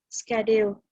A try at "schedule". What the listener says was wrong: Very good, excellent, excellent.